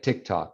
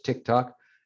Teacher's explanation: in spanish the t and the d are dental whereas in english they're alveolar